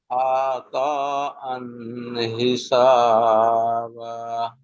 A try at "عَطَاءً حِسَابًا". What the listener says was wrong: আইন টান হবে না।